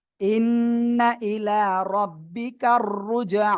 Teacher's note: ইন্না হরকতের বামে নুনে তাসদিদ ওয়াজিব গুন্না।